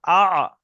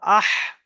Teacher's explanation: দ্বিতীয় মাখরাজ হলো আইন হা, গলার মাঝখান থেকে উচ্চারণ হয়, হামজা আইন জাবার আ, হামজা হা জাবার আহ।